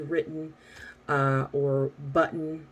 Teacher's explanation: The only times we really wouldn't use that would be if there's an N at the end of the word, like the word written, but we would say it with more of a glottal T